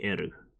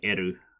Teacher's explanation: They don't have an L sound. They just say eru.